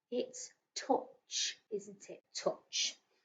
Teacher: isn't making an ow sound it's making an uh sound